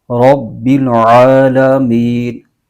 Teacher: آگے ہے رب العالمین، با پر تشدید ہے، اور با حروف قلقلہ میں سے بھی ہے اور تشدید بھی ہے، اس کو جما کے پڑھیں گے، رب العالمین۔